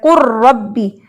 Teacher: لام را کے اندر ایسے مرج ہوا ہے کہ لام کی کوئی صفت باقی نہیں رہی، وہ مکمل طور پہ تمام طریقے سے مدغم فیہ میں داخل ہو چکا ہے. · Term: ادغام حقیقی تام